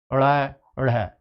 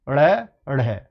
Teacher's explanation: उत्क्षिप्त क्यों बोला जाता है जीभ ऊपर ही ऊपर रहती है इनको बोलने में